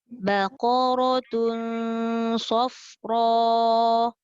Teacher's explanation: Baqaratun, qaf tebal, ra tebal. Lepas tu tun tu dengung.